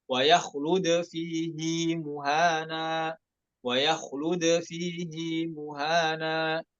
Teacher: نلاحظ صلة الهاء حيث تمد حركتين خلافا للقاعدة